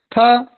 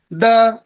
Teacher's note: द यह भी दंत को स्पर्श कर रहा है।